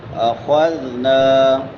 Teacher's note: خا حلقی میں سے بھی ہے اور مستعلیہ میں سے بھی. موٹا کر کے پڑھیں گے.